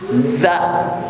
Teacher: Yukhaz tuh hati-hati, bukan dal, bukan khod, tapi khaz, za ya. Jadi si ujung lidah simpan di belakang gigi, za ya.